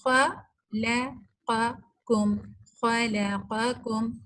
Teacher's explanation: اب خا جو ہے یہ بھی الاستعلاء کے لیٹر میں سے ہے نا, خا پہلا ہی ہے, اور پھر لام بیچ میں چونکہ پتلا لیٹر ہے, باریک حرف ہے, تو ہم اس لام کو موٹا نہیں کریں گے